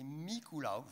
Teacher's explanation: Bref, alors en occitan c'est Nicolaou en général avec donc une diphtongue finale, avec une particularité peut-être à l'est du Rhône, c'est le premier phonème en fait, c'est pas Nicolaou, c'est Miculaou